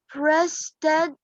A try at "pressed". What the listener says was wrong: Press, press. Why pressed? Pressed, pressed.